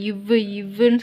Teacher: கீழ் இதழும் மேல்வாய்ப்பல்லும் இணைவதால் பிறக்கும் எழுத்து